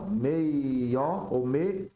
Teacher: Quando o i semivocálico se prolonga, tá? A gente tem esse fenômeno chamado glide